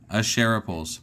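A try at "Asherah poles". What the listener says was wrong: Not pools. Poles. You said pools.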